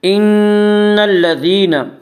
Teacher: نون مشدد غنہ ہوگا، غنہ کی مقدار 1 الف ہے۔ ان الذين یا مدہ وہ یا جو ساکن ہو، اس سے پہلے زیر ہو، یا مدہ کو 1 الف کے برابر کھینچ کر پڑھیں گے۔